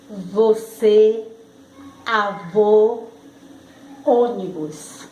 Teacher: circunflexo ele tem timbre fechado